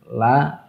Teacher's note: huruf lam yang mengalir dari ujung lidah dan dekat dengan gigi seri bagian atasnya